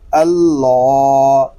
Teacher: اب یہ اللہ پاک کا لام جو ہے اس کو ہم پر یعنی موٹا پڑھیں گے، کیونکہ اللہ پاک کے لام سے پہلے حرف پر زبر آ گیا ہے۔